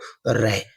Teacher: प्रकंपित व्यंजन जिसमें कंपन के साथ जीभ में कंपन पैदा होता है